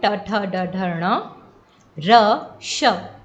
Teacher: ठीक है, तो जो ऊंचा ऊपरी स्थान जो है हमारे मुख में सबसे ऊंचा, तो वो उसे कहते हैं मूर्धा। तो ये जो टवर्ग है ये मूर्धा से उच्चारित होता है